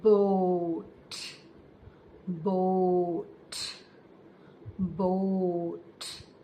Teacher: We push the lips outwards when we say the O sound.